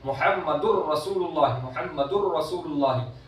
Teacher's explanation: सीधा रॉ के अंदर नून दाखिल हो जाता है